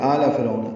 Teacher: وَأَغْرَقْنَا آلَ فِرْعَوْنَ، پچھلی آیت میں آل فرعون پڑھا تھا، من آل فرعون تھا، اب یہاں پہ آل فرعون، آ مد بدل ہے، 2 حرکات لمبا ہے۔ فرعون میں را باریک ہے اور عو بولین ہے